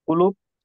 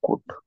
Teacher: पहिला कू पटकन उच्चारतो, पण दुसरा कूट थोडा लांबवतो की नाही आपण?